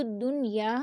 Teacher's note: یہاں پہ ہم اخفا نہیں کریں گے، مکمل ظاہر کر کے نون کو ادا کریں گے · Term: اظہار مطلق